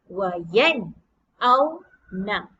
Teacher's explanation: Kita sebutkan huruf nun, kemudian kita sebutkan huruf hamzah yang berada di sebelah nun dengan jelas dan nyata. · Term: izhar halqi